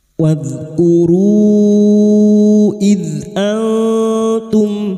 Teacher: dzal sukun lagi, bukan qolaqolah ya, jangan dipantulkan